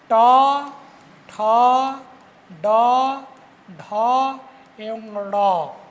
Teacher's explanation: इनके उच्चारण में जीभ का अग्रभाग मूर्धा की ओर मुड़ता है और इन वर्णों का उच्चारण हो पाता है। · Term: मूर्धन्य